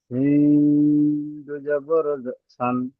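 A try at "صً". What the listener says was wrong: এইটা এইটা একটু মোটা করুন। দেখুন এই সিন আর এই সিনের মাখরাজ কিন্তু আলাদা। এর মাখরাজ হচ্ছে জিভের মাঝখান তার বরাবর উপরের তালুতে লাগিয়ে উচ্চারিত হয়। তাহলে কি হবে, মোটা হবে। শিন, শিন দো জাবার শান। দেখুন এটা যেমন ভাবে সিটি বাজায়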